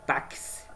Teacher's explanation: Táxi, concorda? Ou seja, esse X aqui é substituído na pronúncia por CS